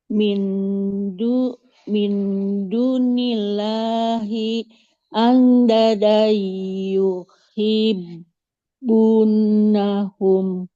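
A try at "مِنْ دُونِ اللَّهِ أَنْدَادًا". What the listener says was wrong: Min dunillahi andada. Huruf dalnya yang pertama panjang. Fathah ada alifnya.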